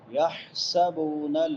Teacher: حا حروف حلقی میں سے ہے، حلق سے ادا ہوتی ہے، وسط حلق سے، حلق کے درمیان سے. یحسبو سین سیٹی والے حروف میں سے.